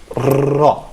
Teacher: the airstream is released through a narrow opening of friction. That's why it's described as fricative sound